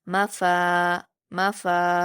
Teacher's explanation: फ पर अलिफ मद्दा है इसे दो हरकात खींचेंगे